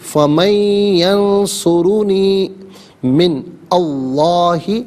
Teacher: اور یہاں ملا کر پڑھنے کی صورت میں من میں نون ساکن کو ینصرو کی یا کے ساتھ ملائیں گے اور یا کی آواز کو غننے کے ساتھ ادا کریں گے